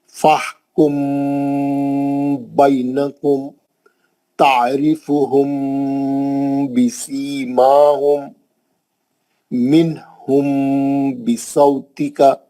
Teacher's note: میم ساکن کے بعد با آئیں گا، آپ غنے سے پڑھیں گے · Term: میم ساکن کا اخفا